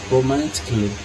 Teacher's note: Observe que eu não pronuncio o A. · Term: silent letters